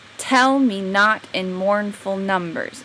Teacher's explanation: Trochaic comes from having the stress on the first word of each pair.